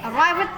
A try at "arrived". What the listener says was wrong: Nah, bukan arrived, tekan D. Arrived, baru D. Ya.